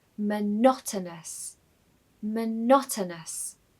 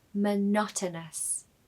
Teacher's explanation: So make sure you stress the second syllable.